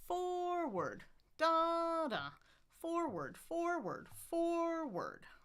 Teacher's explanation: It's two two syllables. Obviously, stress on the first one.